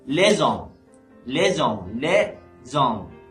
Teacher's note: The S at the end of this first word and H as at the beginning of the second word, so it will be les hommes, not les hommes, okay? And the H, of course, in French language is not pronounced